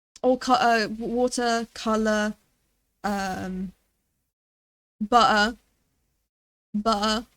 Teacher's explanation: They roll their R's. We don't roll our R's. We just don't say the R's. R's are usually silent.